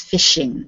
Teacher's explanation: The S doesn't sound as much when there's the H. It's a sh sound and not a s sound.